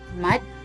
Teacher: Pronounce la as in la la land, and mat you may clip the T sound doing away with the sound like this, mat, or you can pronounce the T softly like mat.